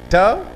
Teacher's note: When I articulate this sound, my tongue curls and bangs onto the palate.